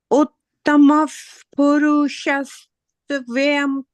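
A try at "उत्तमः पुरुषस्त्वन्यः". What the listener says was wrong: Yeah, purushas, you said it correctly up till there. Purushas, then you say tvanya. Purushas tvanya. Yeah, Didi, purushas, after here you have to just say tva. Purushas tvanya. Tvanya.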